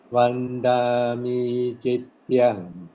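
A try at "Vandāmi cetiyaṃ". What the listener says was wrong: Not cet. The E is long. Cetiyang. Cetiyang. Vandami cetiyang. Cetiyang. Yes, the E is long.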